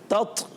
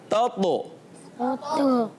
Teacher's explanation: ता शदीदा महमूसा होता है ना, शिद्दत की वजह से आवाज़ बंद होती है और हम्स की वजह से सांस जारी होता है। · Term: हम्स की सिफत